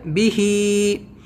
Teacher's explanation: با کو نہیں کھینچنا ہے، حرکت ہے، زیر ہے